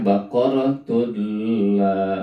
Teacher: tanwin bertemu huruf lam maka nya dibaca tidak gunah ya masuk tapi tidak gunah tidak dengung maka dibacanya baqaratula tidak